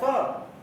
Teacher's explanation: इसका उच्चारण जो है दांत और मसूड़े के पास से होता है। स उच्चारण करके देख लीजिए, दांत और मसूड़ा जहां दोनों का संगम है वहां से उच्चारण होता है, इसलिए वर्त से इसको कहते हैं। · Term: दंत मूल